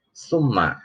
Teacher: Summa ini gunnah, ada mim bertasydid.